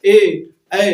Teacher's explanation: ये जीभ जो है तालु की तरफ भी जा रही है और ये कंठ का भी इस्तेमाल हो रहा है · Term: कंठ और तालव्य